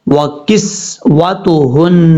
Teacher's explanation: نون کے اوپر شد ہے غنہ کریں گے ایک الف کی مقدار. ہا بھاری ساؤنڈ کے ساتھ پڑھا جائے گا.